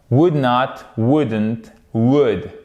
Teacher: Et on ne prononce pas le L.